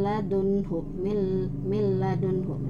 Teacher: Nah, ini kebalikannya, kebalikan dari idgham bighunah, yaitu idgham bila ghunah. Jadi tanpa ghunah, untuk yang ini tidak ditahan, tetapi langsung saja